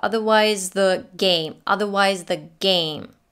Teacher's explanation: So in the word otherwise, she drops the R and it sounds like otherwise. The S links to the TH and the TH is not dropped, but slightly touched. The tongue comes in position for the TH between the teeth, but you don't put it there.